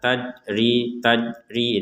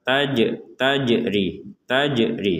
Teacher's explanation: ada Jim sukun kita baca dengan pantulan